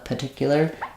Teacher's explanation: that first R is a little bit optional